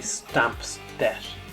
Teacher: you have just that P and D sound, making it very, very final and very harsh here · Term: plosive element